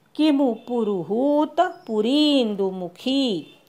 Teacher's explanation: किमु पुरुहूत हू दीर्घ पुरी री दीर्घ आणि खी दीर्घ